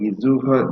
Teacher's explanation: the S in front of the vowel liaises